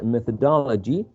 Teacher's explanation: methodology, which has 5 syllables, and the third syllable is the most salient one.